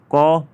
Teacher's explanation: क में कंठ्य वर्ग है, अल्पप्राण वर्ण है और अघोष वर्ण है